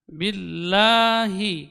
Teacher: huruf lam ini keluar dari sisi lidah bagian ujung atau tepi lidah bagian ujung